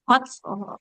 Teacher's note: huruf tnya punya sifat mengalirkan nafas